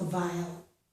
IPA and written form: vaɪl (vile)